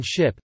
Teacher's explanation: generally described as a voiceless postalveolar fricative, as in ship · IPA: ʃ